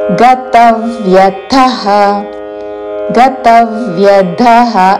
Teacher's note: తా మీద ఆఘాత చివరిలో మహాప్రాణాక్షము థ. గతవ్యథః గతవ్యథః కాదు, అల్ప ప్రాణతో గతవ్యథః అని కూడా కాదు.